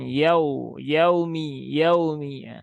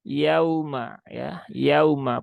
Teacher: Lin itu sifatnya lembut e maka dibaca dengan lembut Nah dengan lembut dan ini bunyinya u ya jangan disentak dan jangan berubah menjadi O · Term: huruf Lin